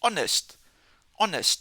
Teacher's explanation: Again this word starts with a consonant but definitely we don't pronounce the H.